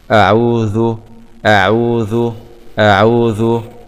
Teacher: همزة فتحة آ، عين ضمة عو، أعو، واو سكون مضى طبيعي عو، أعو، ذال ضمة ذو، أعوذ، أعوذ، أعوذ، أعوذ، أعوذ، أعوذ، أعوذ. مخرج الذال طرف اللسان مع أطراف الثنايا العليا، العين تخرج من الحلق.